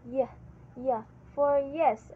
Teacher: So palatal is the sound produced by raising the middle part of the tongue to the hard palate